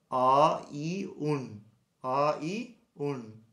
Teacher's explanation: মূর্ধন্য ন উচ্চারণ করার সময় জিভটা একটু ভেতরে যাবে। তাহলে বলতে হবে অ ই উন, অ ই উন।